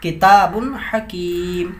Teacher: یہ تنوین کے بعد حروف حلقی ہے حا تو اس کو اظہار کریں گے